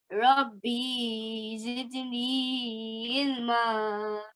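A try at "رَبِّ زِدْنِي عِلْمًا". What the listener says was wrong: Don't prolong the ba. Rabbi.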